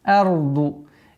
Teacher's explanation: Ра и да, они твердые звуки здесь, так как дад со свойством продолговатость.